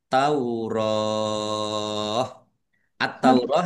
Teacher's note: karena bertemu dengan huruf terakhir yang dibaca sukun karena wakof maka menjadi mat arid lis sukun dibaca panjang boleh 6, 4 atau 2 harokat